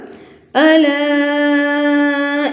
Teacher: الا یہاں کے اوپر مد ہے، اس کو آپ نے 4 فنگر تک لمبا کرنا ہے